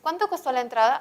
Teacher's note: este tipo de preguntas tienen tono final descendente